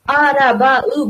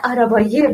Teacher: Va ikkita unli yonma-yon kelganligi uchun ye ham qo'shiladi.